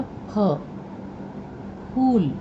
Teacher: अपने होठों को जोड़कर हम बोलते हैं फ, फूल, क्योंकि वो पवर्ग से है।